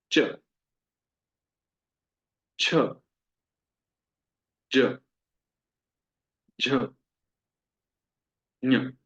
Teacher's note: च वर्ग है वो हमारे तालु से उत्पन्न होती है, ऊपर वाले दांतों के जस्ट पीछे वाला जो भाग है, वहां पर हमारी जीभ टच होती है। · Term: तालव्य वर्ण